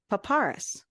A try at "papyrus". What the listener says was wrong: Papyrus. It is not papyrus, because that isn't how you spell it. There is no R before the Y. Yes, but you're saying papyrus, like Dracarys. not that. That is not, no.